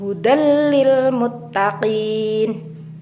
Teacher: surah Albaqarah ayat 2 hudallil Muttaqin pada hukum bacaan Idgham ini bunyi huruf nun dilebur dengan huruf berikutnya sehingga terdengar lebih menyatu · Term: idgham bila ghunah, idgham bila gunnah